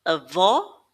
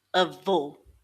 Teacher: The circumflex is going to make that o sound a little bit more closed now like in the word hope.